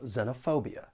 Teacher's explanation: The word has 5 syllables, and the stress is on the 3rd syllable